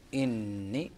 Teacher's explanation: نتجاوز بالعجالة إلى الآية الموالية: إني لكم رسول أمين فاتقوا الله وأطيعون. إني، هنا النون مشددة مغنى بمقدار حركتين